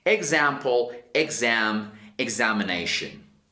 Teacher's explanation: you have the X sounding like a zzz, like a vibration